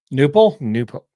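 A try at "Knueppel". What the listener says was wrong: Knipple. I've heard Knipple. I've actually heard the K pronounced, but I could be wrong.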